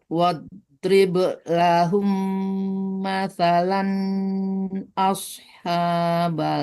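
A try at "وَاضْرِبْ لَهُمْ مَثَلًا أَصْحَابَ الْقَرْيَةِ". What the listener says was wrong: Lan izhar cepat, jangan tertahan lama di lan. Hanya yang panjang, balnya enggak karena lam mati di depan.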